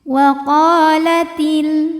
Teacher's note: Mad thobi'i zahiri. Sebab ada alif yang didahului baris fathah, maka huruf qof ini panjang dua harakat.